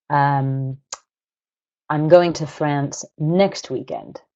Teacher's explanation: I've emphasized the word next I've put nucleus of my sentence on that word because I'm contrasting it with a different word like this weekend so not this weekend but next weekend now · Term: nuclear stress